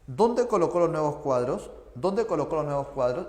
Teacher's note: Esta pregunta no se responde con sí o con no, así que no sería ascendente.